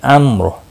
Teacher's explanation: را ساکن سے پہلے میم ساکن اور میم ساکن سے پہلے زبر کی وجہ سے یہ را ساکن پر پڑھا جائے گا